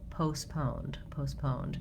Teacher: both British and American English don't say this T sound